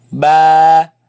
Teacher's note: the sound is b, comes from the lips · It is elongated, it is stretched because of the alif following it. So, ba. You see the sound is light sound.